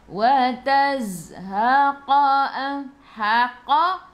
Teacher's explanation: Zai ada sukun. Ingat, untuk huruf zai sifat hurufnya safir. Bila safir kita kena bunyikan z. Okey, bunyi lebah.